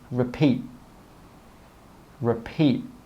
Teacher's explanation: we stop the air with that final T sound.